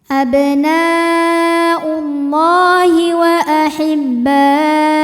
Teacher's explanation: Karena lam berbaris fathah tegak, maka cara bacanya adalah dipanjangkan dua harakat. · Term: mad thobi'i